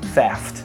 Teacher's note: O f não vibra, então eu preciso de um outro som que não vibra.